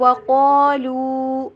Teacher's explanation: وا کے اوپر ہونٹوں کو گول کرنا ہے، وا ڈبلیو ای ساؤنڈ کے اوپر پڑھنا ہے